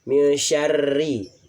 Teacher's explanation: Nah, ro di sini ada tasdidnya dan berharokat kasroh, hukumnya adalah tarkik. Ro tarkik yang dibaca tipis, tidak boleh ditebalkan.